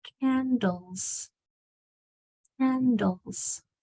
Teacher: S at the end is changing to a z sound it's saying Z it's vibrating sound because the sound before also vibrated